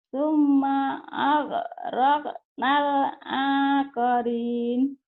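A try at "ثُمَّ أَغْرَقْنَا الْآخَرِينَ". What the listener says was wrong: Thumma aghraqnal jangan akharin ya. Akharin. Akharin. Thumma ag. Thumma ag. Thumma ag. Thumma ag. M-nya ditahan, A-nya dilepas. Thumma ag. Thumma ag. Thumma ag. Thumma ag. Summa, ma-nya dibaca. Thumma ag. Tapi ma-nya jangan ditahan. Jangan summa, jangan. Summa ag. Roknal. Akhirin.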